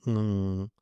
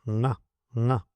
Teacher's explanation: The fifth letter, nga, is nasal. It is formed by using the nose, too, not only the throat.